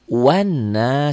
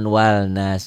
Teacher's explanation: Alif lam ini jangan dibaca.